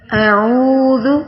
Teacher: اعوذ واو مدہ بن رہا ہے تو واو کو کھینچ کر پڑھنا ہے، ذال پہ نرمی کرنی ہے۔